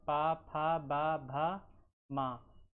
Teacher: दोनों ओठों के स्पर्श से बोले जाने वाले वर्ण ओष्ठ वर्ण कहलाते हैं